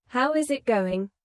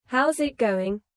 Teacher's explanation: Instead, "How is it going?" becomes "How's it going?" The is disappears and the final G in going often softens. This is called connected speech.